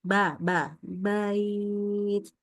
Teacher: Jadi ba itu tidak boleh jadi kayak a ke e ya.